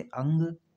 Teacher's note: से बहुत अधिक सांस निकलती है अनुस्वार में क्या होता है इनके उच्चारण में नाक से अधिक हवा निकलती है और मुंह से कम हवा निकलती है